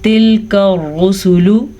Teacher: یہ کاف باریک کاف ہے تو اسے آپ نے باریک ہی پڑھنا ہے، جانے انجانے میں اس کو موٹی کاف نہیں پڑھنا